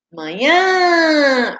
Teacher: A última sílaba é a mais forte, né? O nhã. Então, é uma palavra oxítona terminada em A.